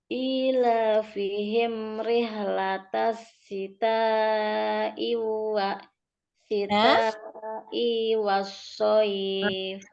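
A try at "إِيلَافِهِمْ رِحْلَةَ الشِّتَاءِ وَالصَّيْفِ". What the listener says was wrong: Kepanjangan i-nya lagi, dipendekkan i ya, hamzahnya yang setelah syita. Syita i, jangan syita i, nggak boleh ya panjang itu ya, pendek di situ.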